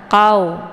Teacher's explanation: qf letak posisinya di Pangkal lidah saat melafazkan huruf qf ini pangkal lidahnya menempel di langit yang lunak · pangkal lidahnya menempel di langit yang lunak, dekat dengan anak tekak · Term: qaf